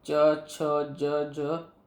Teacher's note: च छ ज झ यहाँ आपका तालव्य से आता है